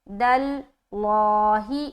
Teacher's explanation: لفظ اللہ کا لام موٹا رکھیں گے کیونکہ اس دال کے اوپر کیا آ گیا؟ زبر آ گیا